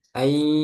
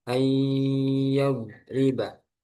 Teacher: Artinya ketika membaca idgham bi gunnah yang bertemu waw dan ya itu harus masuk hidung juga.